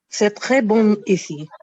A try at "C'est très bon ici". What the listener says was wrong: No, it's say. It is say. S-A-Y. How do you say in English? Say S-A-Y. Same sound you have to use here. Same pronunciation for say. C'est très bon ici. You're concatenating these two sounds. Right now, keep it separate.